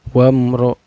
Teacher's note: Cara bacanya mim sukunnya dibaca secara jelas, gak boleh dengung dan gak boleh memantul. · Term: izhar sapawi